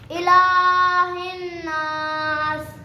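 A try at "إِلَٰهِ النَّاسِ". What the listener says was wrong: यार थोड़ा लॉन्ग कर लो ना, क्या होता है, कुछ भी नहीं होगा।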